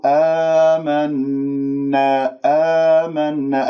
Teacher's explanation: الألف الساكن قبل همزة مفتوح مد بدل حركتين